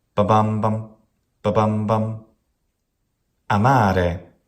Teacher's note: has a short then along then another short syllable